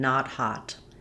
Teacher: Let's look at vowel ah as in not hot. This is an open back unrounded vowel.